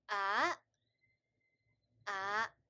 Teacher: So as you can see here, number 2 and number 5, a, a, they are in a different color because these are rising tones. So when I say them, they go kind of like from the bottom to top.